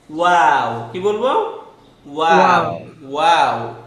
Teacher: ওয়াও হচ্ছে আমাদের ঠোঁটটা গোল হচ্ছে, গোল। ওয়াও, ঠোঁট প্রথমে গোল হচ্ছে, আবার মিলে যাচ্ছে, আবার গোল হয়ে যাবে।